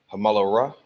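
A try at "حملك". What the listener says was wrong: That's a ka at the end. So the la and the ka are connected. The la and the ka are connected. Lock. Hamalak.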